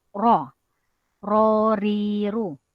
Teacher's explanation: bermain ujung lidah naik kepada lelangit paling belakang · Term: huruf ro